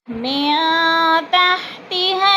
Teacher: نون ساکن کے بعد تا آگے ہے تو اخفا کریں گے، ناک میں آواز کو چھپا کر پڑھیں گے